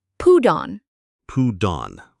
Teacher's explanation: The T sounds a bit like a soft D.